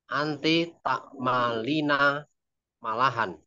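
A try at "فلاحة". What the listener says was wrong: Bukan ma, fa, fa, fa.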